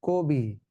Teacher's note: ক এর সঙ্গে যে অ আছে, সেই অটা এখন সংবৃত হয়ে ও হয়ে যাবে, অতএব উচ্চারণ হবে কবি।